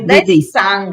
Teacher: વિસર્ગના પછી સકાર છે એટલે અડધો સકાર બોલાય વિસર્ગનો.